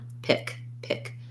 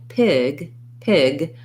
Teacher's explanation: in a sound that ends with a voiceless sound like a k a k sound we hold the vowel for a short time